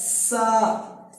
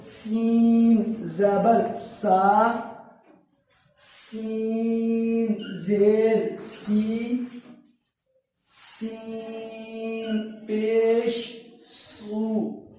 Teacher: سیٹی ہے اس میں اور جھٹکا نہیں دیں گے ہم اس کو